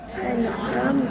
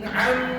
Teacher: Ada bunyi sengau tak? Tak ada. Izhar.